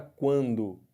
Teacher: Eu fiquei com o som de duas vogais, do A com o U. Só que esse A, vocês estão vendo que ele está nasalizado, né? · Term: ditongo nasal